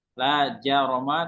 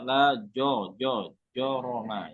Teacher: Ada sifat tebal ketika bertemu dengan huruf tebal di depannya. Jadi jim tidak boleh tebal kalau ada huruf tebal di depannya. Contoh kalimat la jaroma tidak boleh dibaca la joroma ya.